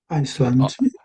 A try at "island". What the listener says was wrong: You're saying Iceland. Iceland. But it's really island. So really the S is silent here.